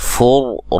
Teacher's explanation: را کو موٹا ادا کریں گے، را ساکن سے پہلے پیش ہے